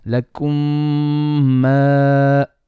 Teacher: let's not stretch the ghunna of the mim onto the mad alif